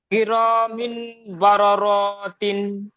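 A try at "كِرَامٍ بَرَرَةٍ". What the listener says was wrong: সেই বললেন বা র র, র টান দিচ্ছেন কেন, বা র র তিন, বা র র তিন পড়েন। আপনি ঠিক করে নেবেন, ওই রটা টান হয়ে যাচ্ছে, হ্যাঁ আপনি মিউট করে নেবেন।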